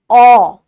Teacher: অ জীবটা হালকা ঢুকিয়ে নিচ্ছে অ গলার কাছে চলে যাচ্ছে